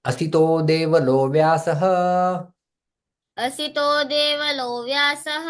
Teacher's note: यहाँ पर संधि होता है, सारे विसर्ग ओ में परिवर्तित हो जाते हैं